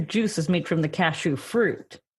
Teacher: saying cashew with the emphasis on the second syllable